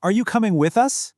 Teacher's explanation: there's the rising tone where your voice goes up and that signals, "Hey, I'm waiting for something." Usually an answer to a question. · My voice goes up, right? That little upward glide is a huge signal that I'm asking a question and I'm waiting for you to answer.